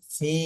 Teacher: ফিতে এক আলিফ টান নিতে হবে মাদের হরফ